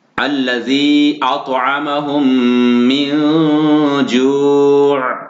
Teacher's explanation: کیونکہ نون ساکن کے بعد جیم حروف اخفا ہے، تو یہاں پر اخفا ہوا گننا کیا جائے گا